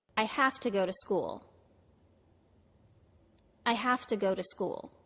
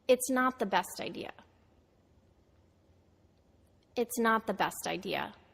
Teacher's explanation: I said the function words quicker and more relaxed than the important content words they almost become part of the content words that follow them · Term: weakening